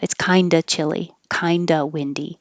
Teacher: we wouldn't say the of with the V